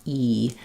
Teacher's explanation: when I'm saying e my tongue is filling up almost all of my mouth there's not a lot of space or opening in my mouth · a lot of space or opening in my mouth e u my tongue is up high it's fairly far forward so there's not a lot of open space in your mouth